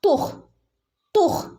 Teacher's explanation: ഇവിടെ ഹിന് സുക്കൂൻ ഉണ്ട് തുഹ്സിറു എന്ന് ഓതരുത്